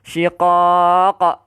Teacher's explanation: So yang ni qalqalah kubra. Yang ni kita panggil kubra sebab dia berhenti.